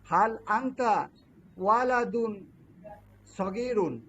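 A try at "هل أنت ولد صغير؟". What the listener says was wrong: সগীরুন, এখানে প্রশ্নের একটা ভাব আসতে হবে। সগীরুন।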